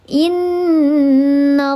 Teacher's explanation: Maka dibacanya dia didengungkan 3 harakat, wajibul gunnah. Innallaha, nallaha, ada lafzul jalalah sebelumnya harakatnya fathah. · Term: gunnah musyaddadah